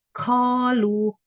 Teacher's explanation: saat mengucapkan qaf, ada tambahan hams (aspirasi)